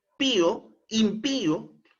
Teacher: en la i porque es una palabra aguda Pío impío eh lleva la mayor entonación de voz en la última sílaba Pío pero como le colocamos una tilde Entonces se quiebra esa sílaba